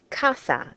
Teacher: because it ends in a vowel so we put that stress on the second to last syllable